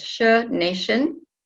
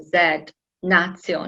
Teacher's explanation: in English, T-I-on, you pronounce sh, nation, while in Latin it was a Z, natio